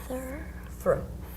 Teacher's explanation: When you make this sound, your teeth have to be like squeezing your tongue together. So your tongue has to come out between your teeth